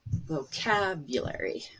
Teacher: vocabulary, the stress is on cab, and the a is the one that's longer. And the whole syllable is higher and louder as well. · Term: syllable stress